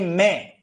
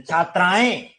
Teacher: ये मुख और नाक की ध्वनि है इसलिए इनको सानुनासिक कहते हैं